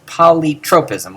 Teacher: Notice how the poly is completely unaccented and simply springboards into the rest of the word.